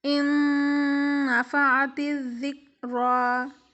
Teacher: جب ہم ان پڑھیں تو بیچ میں 2 سے 3 سیکنڈ کے لیے ہم غنہ کر رہے ہیں